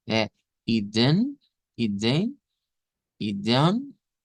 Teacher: la E siempre se vuelve especial. Aquí es nasalizada.